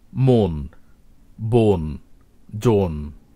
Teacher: এই শব্দগুলোর প্রতিটি আদ্য অ ও বা ওকারের মতো উচ্চারিত হয়েছে, কারণ তারপরে দন্তন রয়েছে সেজন্য।